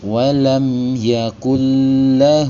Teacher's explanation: mim sukunnya dibaca dengan jelas atau izhar bunyi m-nya jelas sekali. Walam yaaklu. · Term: izhar syafawi